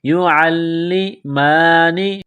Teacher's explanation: عین کو لام کے ساتھ ملانا ہے، لام میں سختی کرنی ہے ، یعلمان، میم کے اوپر کڑا زبر ہے، ایک الف کے